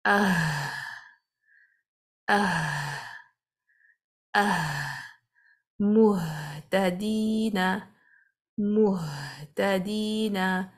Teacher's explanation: The ha is pronounced with the partial opening of the vocal cords. There is some friction or rubbing of the vocal cords as the air travels through the small opening. Unlike the letter hamza, the letter ha doesn't have the closing of the vocal cords. · with the sukoon, you carry on the sound for a while.